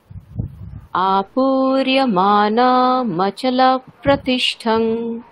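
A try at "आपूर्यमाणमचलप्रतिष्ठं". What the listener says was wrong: আচ্ছা, আপুরিয়মানা এখানে আমরা মানে স্টপ করবো না, ঠিক আছে, ওটা একসাথেই কন্টিনিউ চলবে যেহেতু ওটা হ্রস্ব এবং একসাথেই চলছে, তো আপুরিয়মানা ওখানে আমরা স্টপ করবো না, একসাথেই চলবে। কেমন, আপুরিয়মানা মচল প্রতিষ্ঠম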